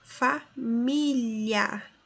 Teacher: Família, nós temos aqui um ditongo e não hiato.